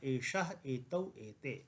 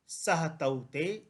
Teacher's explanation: पुल्लिंग में एतत् का रूप बन रहा था एषः एतौ एते, वहाँ से ए हट गया है और अंतर केवल एक यह है कि एषः में मूर्धन्य शकार है तो यहाँ पर दंत्य सकार है